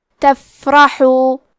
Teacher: حرف را کو موٹی آواز میں پڑھنا ہے اور ہا کی ادائیگی حلق کے درمیان والے حصے سے ہے